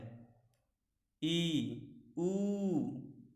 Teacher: इनको बोलते समय मुंह हमारा सबसे कम खुलता है, इसलिए इसको संवृत्त कहते हैं।